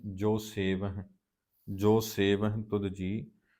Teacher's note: ਹਾਹੇ ਦਾ ਉਚਾਰਨ ਇੱਥੇ ਹਲਕਾ ਆਏਗਾ। ਜਦੋਂ ਬਹੁਵਚਨੀ ਕਿਰਿਆ ਅੰਤ ਹਾਹੇ ਨੂੰ ਸਿਹਾਰੀ ਨਾਲ ਹੁੰਦੀ ਹੈ, ਉਚਾਰਨ ਉਸ ਦਾ ਦੁਲਾਵਾਂ ਵਾਲੇ ਪਾਸੇ ਨੂੰ ਜਾਂਦਾ ਹੈ, ਪਰ ਹਾਹੇ ਦਾ ਉਚਾਰਨ ਹਲਕਾ ਉੱਥੇ ਆ ਜਾਂਦਾ।